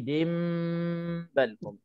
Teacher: Kita tukarkan tanwin itu, nun yang ada dalam tanwin kita tukar jadi mim sebab bertemu dengan ba. Jadi kita pilih, saya lah pilih untuk rapatkan mulut terus masuk ke dalam ba. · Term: iqlab